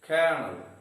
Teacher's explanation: kernel again having two syllables and the stress is on the first syllable